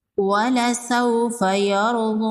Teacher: واو لین ہے، اس کو نرمی سے پڑھیں گے، را ساکن سے پہلے زبر ہے، را ساکن کو پر پڑھیں گے۔ کھڑی زبر ہے، ایک الف کے برابر کھینچ کے پڑھیں گے، یا کو سائلنٹ کر دیں گے۔